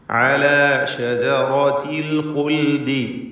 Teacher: അൽ ഖുൽദി എന്ന് പറയുമ്പോൾ ഖാഉം തഫ്ഖീം ചെയ്യേണ്ട ഇസ്തിഅലാഇൻ്റെ അക്ഷരങ്ങളിൽ പെട്ടതാണ്. നിസ്ബിയ തഫ്ഖീമാണ്, ളമ്മായതുകൊണ്ട്.